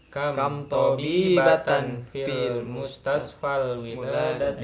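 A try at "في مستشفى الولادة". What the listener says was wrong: Ya, bukan fil ya, bukan fil mustasfal, nggak ada alif lamnya. Fi mustasfal wiladati.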